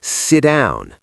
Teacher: Sit ends with unvoiced T. Down starts with voiced D. · It doesn't want to switch from unvoiced to voiced in that same position. So, the strong sound, the voice D, eats the weak sound, the T. It becomes sit down. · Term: assimilation